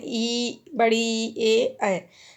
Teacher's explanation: आगे की जीभ बहुत एक्टिव करेगी, बहुत एक्टिव रहेगी आगे की जीभ, तो इन्हें अग्रस्वर बोलते हैं।